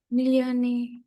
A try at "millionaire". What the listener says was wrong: Yeah, you said millionary, okay, which is not correct. It's millionaire. Millionaire.